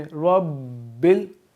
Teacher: बा पे आपने ठहरना है, थोड़ा रुक के पढ़ना है वहाँ पे आप, क्योंकि तशदीद है, और बा पे हम थोड़ा वेट करेंगे।